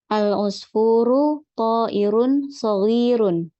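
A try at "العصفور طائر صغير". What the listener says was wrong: Ya, mumtaz ya.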